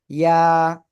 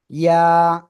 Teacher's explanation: ওই একই জায়গায় জিহ্বার মধ্যখান তার বরাবর উপরে তালুর সাথে লাগিয়ে জাস্ট এক আলিফ টেনে ছেড়ে দেবেন। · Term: ইয়া অক্ষরটা